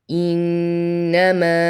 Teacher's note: Here فذكر إنما not إنما. And the noon has Gunnah, so hold on it to count. إنما med 2, 4 or 5 حركات.